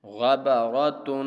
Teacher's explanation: تنوین والی تختی کے حروف کو غنہ کے ساتھ پڑھا جاتا ہے، تو تا پر بھی ہم غنہ کریں گے